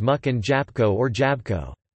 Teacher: the ł in the words mógł (could) and jabłko (apple) might be omitted in ordinary speech